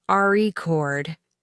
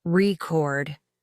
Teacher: if you say the word record with the stress, on the first syllable it's a noun, record, but if the stress is on the second syllable, it's a verb